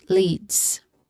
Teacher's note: There's a long e vowel sound here, and it ends with a buzzing sound, although very subtle, but still a buzzing sound.